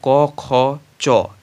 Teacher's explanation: যেসব ধ্বনি উচ্চারণের সময় স্বরতন্ত্রী অনুরণিত হয় না তাদেরকে অঘোষ ধ্বনি বলে, যেমন ক, খ, চ ইত্যাদি।